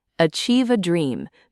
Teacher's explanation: linking the V sound in achieve smoothly to the A, and giving a nice warm emphasis to dream